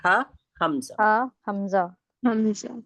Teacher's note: हमजा हलक के सीने वाले हिस्से से अदा होता है